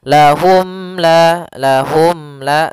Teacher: suara mimnya tidak boleh ditahan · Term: izhar syafawi